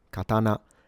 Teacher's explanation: Now there is a secondary possible pronunciation with the hairband pattern. So from low to high and staying high